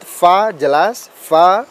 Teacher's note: pengucapan huruf fa ada angin yang keluar sedikit